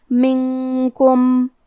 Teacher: کاف حروف الاخفاء میں سے ہے اور اخفاء کا معنی ہے چھپا دینا، تو ہم نون ساکن کو چھپاتے ہوئے اور غنہ کے ساتھ یہ حکم کو ادا کریں گے